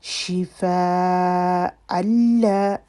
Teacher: شفا پھر وہی بڑی مد آ رہی ہے، الف مدہ کے بعد حمزہ اسی کلمے میں ہے اور اس کے بعد اللہ، ادغام وتھ آؤٹ، گنہ غننے کے بغیر، اور اس کے بعد الف مدہ۔